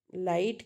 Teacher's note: इसमें है L sound at the beginning of the word is clear है ना लाइट के केस में एल बिल्कुल क्लियर है